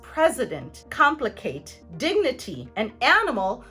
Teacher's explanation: The schwa sound will replace the I sound in words where we have 3 syllables or more, and the I is found in the middle syllable. Words such as president, complicate, dignity, and animal all show a schwa sound instead of the middle I. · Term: open I